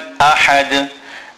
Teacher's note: in ahad, the ha is a big ha, which is pronounced from the center of the throat. And then we make qalqala on the dal at the end.